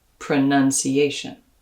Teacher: in the noun pronunciation that second syllable becomes an uh like in stuff